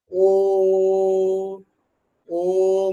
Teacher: দুটো ঠোঁটের যে পাতা সেই দুটো এক জায়গায় হয়ে একটা ছোট্ট জিরোর মতন হয়ে যাচ্ছে, একটা শূন্যর মতন দেখাচ্ছে। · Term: কুঞ্চিত স্বরধ্বনি